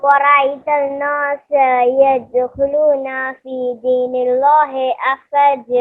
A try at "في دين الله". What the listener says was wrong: نہیں, اللہ کو یہاں پر پتلا پڑیں گے, فی دین اللہ.